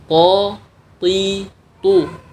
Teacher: Untuk huruf th, pangkal lidah harus sedikit naik agar menghasilkan suara yang lebih tebal. Kemudian landasan atau tempat menempel ujung lidah berikutnya adalah ujung lidah dan gusi atas. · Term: huruf to